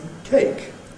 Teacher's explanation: The weak form of “some” [ sʌm ] is [ səm], which very readily becomes [ sm̩ ].